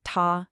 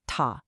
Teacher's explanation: The correct sound is that high, flat first tone, ta. Please avoid the sharp falling fourth tone, ta. It can sound really harsh or angry.